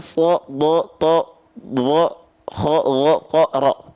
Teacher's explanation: Karena kalau huruf tebal, dia vokalnya bukan A, tapi cenderung condong seperti bunyi vokal O.